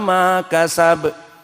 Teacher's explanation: Maka di sini ma kasaba mad tabi'i, dan kasaba di sini qalqalah.